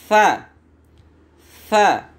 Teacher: Cara pengucapannya adalah ujung gigi yang atas ditempelkan ke lidah bagian tengah.